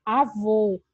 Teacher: Avô, nós temos duas sílabas e o vô é a sílaba tônica.